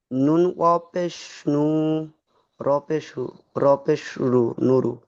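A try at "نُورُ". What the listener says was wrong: ভাই টান দিয়ে পড়েন ভাই, আমি বলছি টান হবে না, আবার সেই একই পড়ছেন।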